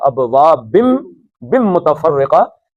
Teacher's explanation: نون تنوین کے بعد میم آئی ہے تو نون نہیں پڑھا جائے گا، میم پڑھا جائے گا